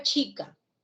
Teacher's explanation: CH representa el fonema africado palatal o alveopalatal del español. O sea, ahí ya estamos viendo que no hay una correspondencia de 1 a 1.